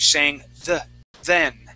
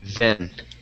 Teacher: you had used a Spanish D sound, saying den. Okay. Remember, we want to pronounce that th, saying then.